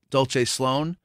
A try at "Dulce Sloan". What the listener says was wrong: to correct you on this because I've been saying Dulce Sloan. She pronounces it Dulce, like Dulce. Spanish way. I've been saying it Italian way, like you.